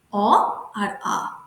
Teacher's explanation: কণ্ঠের সাহায্যে উচ্চারিত হয় বলে একে কণ্ঠধ্বনি বলা হয়